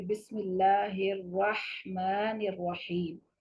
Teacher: جیسے یہاں پر آپ کے سامنے ہے، بسم اللہ سے شروع کرتے ہیں کہ بسم اللہ الرحمن الرحیم، یہ ہا جو ریڈ کلر میں آپ کے سامنے ہے، ہا وسط حلق سے نکلتی ہے